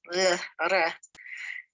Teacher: Resh, which is an R sound, which is kind of flipped off the tongue